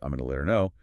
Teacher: >> Like the example earlier, I'm going to let her know very often becomes I'm going to let her know. The h in her just vanishes.